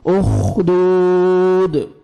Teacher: उखदू, वाव मद्दा है, दाल को 1 सेकंड खींचना है और लास्ट में दाल साकिन कलकला करेंगे